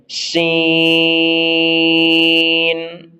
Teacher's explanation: سیٹی تیز ہے، نون میں آواز رپیٹ نہیں ہونی، مد کو 3-4 سیکنڈ کھینچیں گے